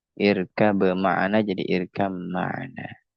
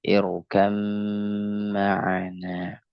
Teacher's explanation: Jadi itulah yang disebut dengan idgham mutajanisain. Nah, khusus idgham mutajanisain yang ba dengan mim maka didengungkan